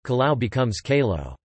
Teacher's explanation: the diphthongs ai and au on the end of base words are typically pronounced as /e/ and /o/